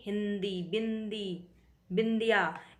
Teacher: जैसे न हलंत, ध्वनि सुनाई देने पर क्या होगा, वो अनुस्वार होगा, यानी हिंदी, बिंदी, बिंदिया, इसमें न सुनाई दे रहा है तो वो अनुस्वार हुआ